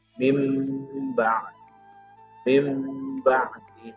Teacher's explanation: maka dibaca huruf mim, mengganti nun atau suara nunnya menjadi mim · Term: iqlab